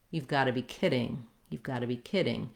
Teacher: these three parts, you've gotta be, are all very short, and they're about the same length as this whole word kidding. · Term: stress pattern